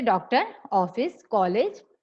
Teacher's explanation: इनको बोलते समय इनकी ध्वनि जो है आ और ओ के बीच की निकलती है। इसे दर्शाने के लिए अर्धचंद्राकार का प्रयोग किया जाता है।